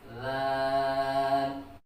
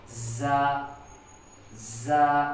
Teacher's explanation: لال یہ نرم حروف میں سے ہے، نرمی کے ساتھ اس کو ادا کیا جا رہا ہے، جبکہ زا سختی والا حرف ہے، اس کو سختی کے ساتھ ادا کیا جا رہا ہے